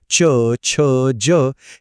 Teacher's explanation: च वर्गातले ध्वनी च, छ, ज हे जीभ टाळूला लागल्यावर येतात, म्हणून ते झाले तालव्य.